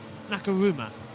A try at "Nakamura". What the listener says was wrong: It's Nakamura. The M is before the...